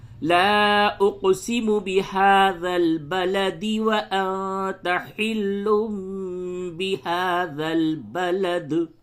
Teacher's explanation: جب آیت نمبر 1 اور 2 کو آپ ملا کر کے پڑھتے ہیں تو پھر یہاں پہ دال پہ قلقلہ نہیں ہوگا